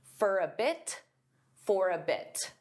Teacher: sometimes native speakers will pronounce the T in this case because it's at the end of a sentence.